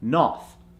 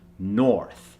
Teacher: the or sound happens from the back of the neck · in the Indian accent often the or sound that is really strong in an American accent is completely dropped